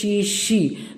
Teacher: अंदर से जो है हमारी हवा बाहर निकलती है दोनों दांतों के बीच में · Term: शलजम वाला श